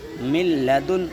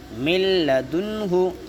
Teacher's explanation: اور لام کا مسئلہ رہا کہ نون ساکن کے بعد حروف یرملون میں سے لام اگر آتا ہے تو یہاں پر بھی بغیر گنہ کے ملا کر پڑھیں گے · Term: ادغام تام